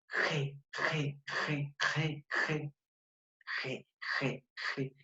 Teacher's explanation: Velares, porque mi lengua va a hacer contacto con los velos que está al costado más o menos de mi paladar y mis alvéolos.